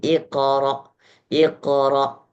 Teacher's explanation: Qnya seakan-akan ada harakat fathah tapi komposisinya sedikit kecil sekali.